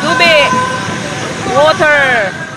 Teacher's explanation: It's called tubi with a sudden stop in the vowel I. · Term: maragsa sound